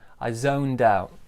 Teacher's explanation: So small stress on this O sound, big stress on out.